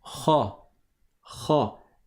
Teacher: la lettre RA elle était grave elle était emphatique c'est pas r C'est pas RA comme le a français RA